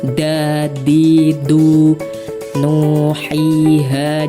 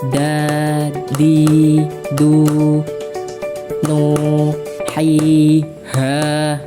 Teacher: Mad thobi'i yaitu fathah diikuti alif, kasrah diikuti ya sukun, dommah diikuti wau sukun. panjangnya yaitu kira-kira itu satu alif atau dua harakat